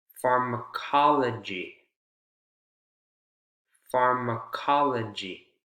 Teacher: now careful with pharmacology you have secondary stress on the first vowel sound